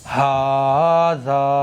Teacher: ہا کو بھی ہمیں ایک الف کے برابر کھینچنا ہے اور ذال کو بھی ایک الف کے برابر کھینچنا ہے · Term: کھڑا زبر